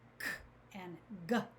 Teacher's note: Our back of our tongue is moving up and pushing against that soft palate.